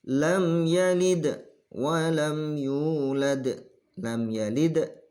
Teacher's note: Di sini juga ada qalqalah. Ya, qalqalah kubro lagi yang berupa dal yang disukun.